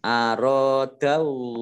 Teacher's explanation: Ini alif fathah alif mad tabi'i. Kemudian Allah dibaca tebal karena depannya fathah.